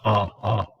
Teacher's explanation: the jaw goes down but it's not rounded